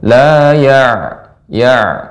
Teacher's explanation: Nah, pada kata ain ibu terus dilatih untuk lebih sedikit mengalir karena ain sifatnya adalah bainiah. Jadi sedikit mengalir